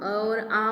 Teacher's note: तो कंठ से हम अ और आ बोलते हैं। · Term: कंठ्य